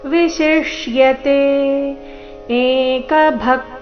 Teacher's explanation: ನಿತ್ಯಯುಕ್ತ ಏಕಭಕ್ತಿರ್ವಿಶಿಷ್ಯತೆ ಭಕ್ತಿರ್ವಿಶಿಷ್ಯತೆ ಎರಡು ಪ್ರಕಾರದ ಶ ಈ ಶಬ್ದದಲ್ಲಿ ಬಂದಿದೆ. ಮೊದಲು ತಾಲವ್ಯ ಶ, ಅದರ ನಂತರ ಮೂರ್ಧನ್ಯ ಶ.